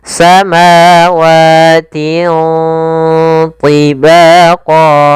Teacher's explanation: cara membacanya suara tanwinnya disamarkan ke huruf th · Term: bacaan ikhfa